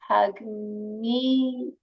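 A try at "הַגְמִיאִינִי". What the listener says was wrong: It's an aleph, not a yod. Hagmi inni.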